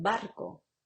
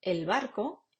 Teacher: si lo convertimos en el barco ya no es oclusiva se convierte automáticamente en la versión fricativa